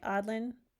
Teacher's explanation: every time you think you have just a vowel in the front, there's a glottal stop there